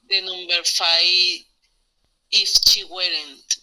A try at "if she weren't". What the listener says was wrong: Yes, she weren't. You're right.